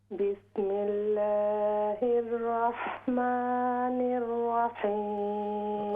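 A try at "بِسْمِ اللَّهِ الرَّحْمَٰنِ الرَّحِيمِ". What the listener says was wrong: ये रा को आप जब पढ़ते हैं बाज़ औक़ात तो वाव की आवाज़ आ जाती है, ठीक है?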